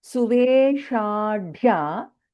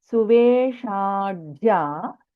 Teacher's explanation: Sha, and Mahaprana Dha followed by Ya.